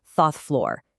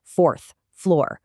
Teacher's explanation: The first time in their casual natural voice, a lot of clerks would say something like Thoth floor. See how the R is kind of dropped?